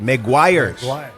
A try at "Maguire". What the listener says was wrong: It's like the movie, Jerry Maguire. But the name is Maguire, but the S is not Maguires. It's the parang referring to the product, but the family name is Maguire.